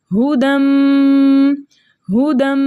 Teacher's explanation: ठीक है, दाल के ऊपर 2 ज़बर की तनवीन है, 2 ज़बर के तनवीन के बाद यरमुलून के मुतहर्रिक हुर्फ़ों में से मीम आ रहा है, तो हम 2 ज़बर की तनवीन को मीम से मिलाकर इस तरह अदा करेंगे कि दोनों एक साथ मुशद्दद अदा हों और हरकतैन मिक़दार गुन्ना भी करेंगे। और यहाँ पर कायदा होगा इदग़ाम माअल गुन्ना।